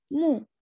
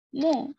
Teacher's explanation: मीम पेश क्या होना चाहिए, मीम पेश मु, हम पढ़ते क्या है मो